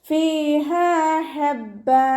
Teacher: ഹഇൻ്റെ മഖ്റജ് വസത്തുൽ ഹൽക്കാണ്. സൗണ്ടിന് ഹംസയായി പോവാതെ ശ്രദ്ധിക്കുക. ഫതഹ തെൻവീനിൽ വഖഫ് ചെയ്യുമ്പോൾ 2 കൗണ്ട് നീട്ടി വഖഫ് ചെയ്യുക കേട്ടോ.